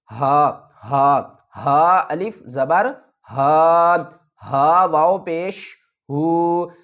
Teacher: دیکھیں اوپر ہم نے ہا پڑھا جو ہم حلق کے درمیان والے حصے سے ادا کر رہے تھے، اور یہ ہے ہا، یہ ہم اپنے حلق کے نیچے والے حصے سے ادا کریں گے اور آواز بھاری ہوگی۔